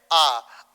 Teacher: जिन स्वरों का उच्चारण करते समय जो आपके मुख का द्वार है सबसे ज्यादा खुलता है, उसे विवृत स्वर कहा जाता है